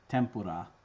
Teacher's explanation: it's pronounced differently depending on what kind of sound comes next when n is followed by a labial consonant it assimilates to an m